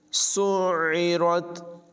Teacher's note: सीन को आइन से मिलाएंगे और आइन की आवाज़ जो है ये हलक से निकालेंगे। नाज़रीन किराम, आम तौर पर इसको आइन की आवाज़ को नहीं ज़ाहिर किया जाता बल्कि इसे सुइरत पढ़ा जाता है, तो ये बहुत बड़ी गलती है।